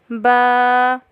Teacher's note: با دونوں ہونٹوں کے تری والے حصے کے ملنے سے ادا ہوتا ہے